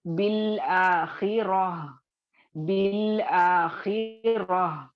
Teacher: बाजिर बी को लाम साकिन से डायरेक्ट मिलाकर पढ़ ली